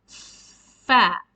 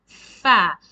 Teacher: the articulation makhraj of the letter is from the lower lips and the tips of the two upper incisors. Means you need to rest your upper two incisors on the lower lips, and there is a little bit space between the two lips to for the air to escape, and you need to blow from inside fa, and you pronounce fa.